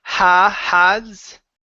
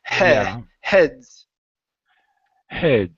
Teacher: close the mouth just a little bit more for the short E.